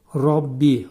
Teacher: ra təxvim oxunur, qalun oxunur. Bə hərfi incə samitlər qrupuna aiddir.